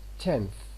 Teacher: n, which is realized as a dental when it occurs before another dental sound, as in the word tenth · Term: assimilation